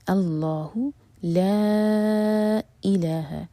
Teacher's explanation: لا یہاں پر مد ہے، اس کے بعد جو ورڈ ہے وہ حمزہ سے شروع ہو رہا ہے، تو یہ ہے مد منفصل 4 حرکہ لمبا